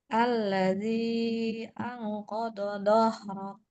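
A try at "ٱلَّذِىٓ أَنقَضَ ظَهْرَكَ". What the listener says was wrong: Jangan kododo. Yang satu bo, yang satu zo. Kodo zohrok. Tapi nggak ada yang panjang kodo.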